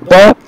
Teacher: it is bilabial and it is again a stop because we stop the air with the help of two lips